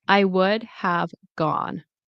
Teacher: We do not pronounce the L.